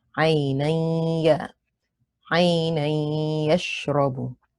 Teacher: This is idgham bi ghunna. You merge and retain the ghunna.